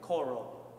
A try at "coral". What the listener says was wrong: Give me the final L. When we say L's, they don't happen back here. They happen in the very front. Say like you are Italian, coral.